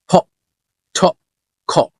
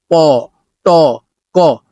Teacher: না, এই আশা মানে ওই আশা ভালোবাসা না, এই আশা মানে হলো বাতাস আসা, বাতাসের বিস্ফোরণ। আপনারা খেয়াল করবেন যখন এগুলোকে আমরা উচ্চারণ করছি তখন সামনে একটা বাতাস চলে আসছে এবং হাতে সেটা লাগছে। · যখন এগুলোকে আমরা উচ্চারণ করছি তখন সামনে একটা বাতাস চলে আসছে এবং হাতে সেটা লাগছে। যদি একটু হাত দিয়ে দেখি, ফ, ঠ, খ। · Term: অ্যাসপারেটেড সাউন্ড